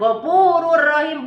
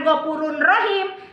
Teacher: kalau bilaguna tidak didengungkan tapi tetap dimasukkan cara membacanya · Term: idgham bilaguna